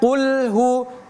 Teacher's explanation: Qulhu itu tebal qu. Jangan kita baca ku.